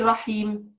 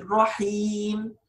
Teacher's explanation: Just stretch here the ya a little bit.